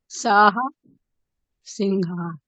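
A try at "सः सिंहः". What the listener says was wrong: সিংহः, বিসর্গ আছে, উচ্চারণ করতে হবে, বিসর্গকে ছাড়লে হবে না ম্যাডাম। তাই জন্য আমি এটা শোনার জন্যই আপনাকে বারে বারে জিজ্ঞেস করছি যে আপনি শেষটা কিভাবে করছেন। সাহা সিংহা।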